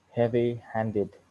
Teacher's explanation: primary stress is on the second word secondary stress is on the first word